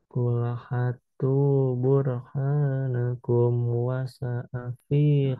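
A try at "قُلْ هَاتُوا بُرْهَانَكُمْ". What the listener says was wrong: Ha panjang, fathah bertemu alif. Ha. Terus tadi ha yang kedua. Panjang. Coba.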